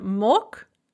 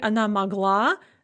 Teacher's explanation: the g is pronounced like a ka because of word final devoicing